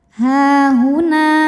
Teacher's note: ha mad tabi'i muqaddar karena ha berbaris fathah panjang, maka ha panjang 2 harokat.